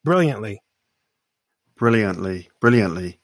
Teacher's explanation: you perceive the t by making it a slightly different way i'm not taking the tip of my tongue and putting it on my gum ridge to say brilliantly right and so you don't hear that it's almost as if